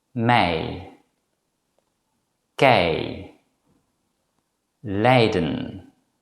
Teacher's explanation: You can produce this compound vowel by first pronouncing the vowel A, as in the English word apple, and then gliding to the vowel E.